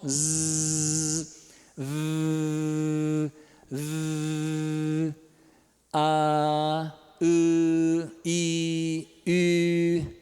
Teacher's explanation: último aqui os sons sonoros na extrema direita que que acontece as cordas vocais estão juntinhas e estão vibrando em toda a sua extensão